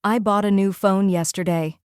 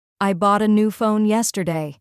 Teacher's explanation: The strong beats fall on bought, new, and phone. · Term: Word stress in sentences